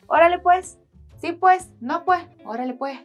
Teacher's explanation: instead of saying pues I always end up saying puej. More like a J at the end.